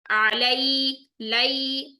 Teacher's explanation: या साकिन से पहले जबर आ गई, इसका मतलब है मोड़ कर अदा करेंगे नरमी से। ठीक, 1.5 सेकंड की काउंट में, अलई, लई, अलैहिम नहीं करेंगे, लै करेंगे, गलत हो जाएगा। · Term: या लीन